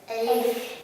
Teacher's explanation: Не надо растягивать алиф, а резко.